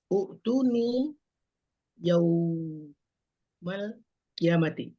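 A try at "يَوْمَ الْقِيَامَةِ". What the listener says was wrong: Agak ketek bunyinya di yauma tuh. Coba yauma, yaumi, yaumu. Uktuni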